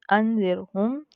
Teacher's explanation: रॉ साकिन हो, ठीक है, और उससे पहले वाले वर्ड पर ज़ेर हो यानी कसरा हो, तो हम क्या करेंगे, रॉ को बारीक पढ़ेंगे